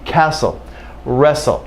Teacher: so in these words definitely never do you hear a t sound · Sometimes the T will be absent, no sound at all. Neither a full T nor a D sound.